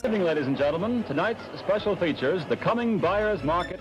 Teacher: a hybrid accent that sounded vaguely British, with dropped R's and slightly clipped delivery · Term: Mid-Atlantic English